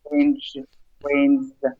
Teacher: those voice sounds at the ends like range and then rains, slight Z sound